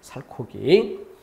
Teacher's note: 살 뒤에 히읗이 더 생기면서 그 더 생긴 히읗이 본래 있던 기역과 만나서 거센 소리인 키읔 이렇게 바뀌는 것이죠